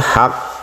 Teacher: menekannya itu langsung, tidak ada desis sama sekali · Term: syiddah